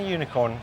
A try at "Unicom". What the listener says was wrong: Unicom. Not unicorn. No, it's Unicom.